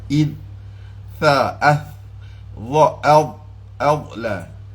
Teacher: Ini tarful lisan ila sanayal ulya, hujung lidah menghala ke gigi atas